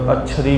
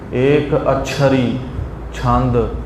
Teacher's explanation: ਅਛਰੀ ਪੜਨਾ ਹੈ ਭਾਰਾ ਕਰਕੇ ਅੱਧਕ ਦੇ ਨਾਲ